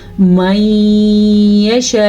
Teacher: جب حمزہ کے اوپر ساکن ہو تو وہاں پہ ایک چھوٹا سا جھٹکا پیدا ہوتا ہے